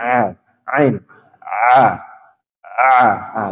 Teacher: Jadi huruf ain ditekan di tengah tenggorokan